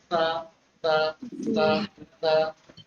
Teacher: जबान की नोक और ऊपर के दांतों का सिरा लगा के इसकी ये इसका मखरज है।